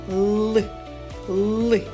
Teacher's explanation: Зубки зближені, а вузький кінчик язика піднятий за верхні зубки. · Звук л приголосний, твердий, дзвінкий.